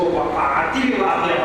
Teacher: اس تا کو زیر دے کر اگلے لفظ کے ساتھ ملا دیا جاتا ہے